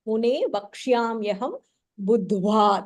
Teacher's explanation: The second dha is mahapranah. Again, there is a There is a dvitva there.